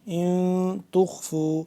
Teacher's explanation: یہاں پہ ہم اخفا کریں گے نون ساکن کی وجہ سے